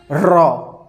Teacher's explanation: र जब भी बोलिएगा ना आपका जीभ न थर्रा जाएगा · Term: प्रकंपित वर्ण